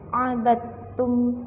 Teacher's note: Karena ada dal sukun yang bertemu dengan ta, dan huruf dal itu wajib dimasukkan ke huruf ta sehingga ta seolah-olah berharokat tasydid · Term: idgham mutajanisain